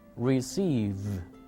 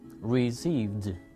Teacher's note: Las cuerdas vocales aquí sí vibran. Por lo tanto, se pronuncia d.